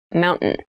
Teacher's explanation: keep in mind when you pronounce this word in fast speech it sounds like Mountain the T sound is reduced